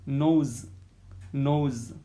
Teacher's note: air passes through nose and a mouth both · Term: nasal sound